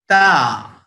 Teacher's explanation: जबान की नोक ऊपर के दांत की जड़ में लगाएंगे, ऊपर के दांत की जड़, ऐसा जबान ऊपर लगेगी, back of the upper teeth, और आवाज आएगी ता।